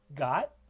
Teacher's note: there is vibration, more vibration in the throat than with cot. And that's because the glottis is closed, a bit more closed in got than it is for cot, allowing vibrations.